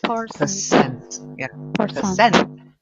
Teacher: you'll see the stress isn't on per, it's on cent. Percent. Yeah.